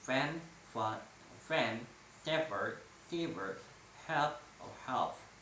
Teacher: These are labiodental. The lower lip is in contact with the upper teeth